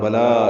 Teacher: بلا لام پر کھڑا زبر، دو حرکات لمبا کریں گے